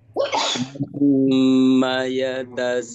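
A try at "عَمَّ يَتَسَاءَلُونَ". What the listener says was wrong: Itu di lafadz amanya udah bagus, tinggal itu yatasanya jangan terlalu panjang Pak ya, 4 harakat. Amma yatasaalun.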